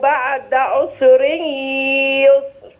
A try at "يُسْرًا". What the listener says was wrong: يسرا بعد عسر يسرا. الرواية معي هنا بإسكان السين يا أمي، فأخلي بالي عشان ما تجيش مني أنها كأنها مضمومة. الضم في رواية أخرى، إنما في هذه الرواية الأصل فيها إسكان السين في كل القرآن في كلمة عسر ويسر. فحفص يقرأ عسر يسرا، فنخلي بالنا من الضبط لأنه يحدد الرواية.